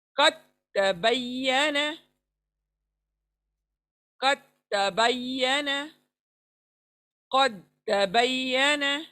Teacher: तो दाल को छोड़ देंगे और त को मिला देंगे